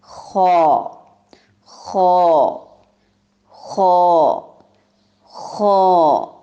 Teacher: گلے کی خرخراہٹ کی جہاں سے آواز آتی ہے وہاں سے، اس کو ادنی حلق کہتے ہیں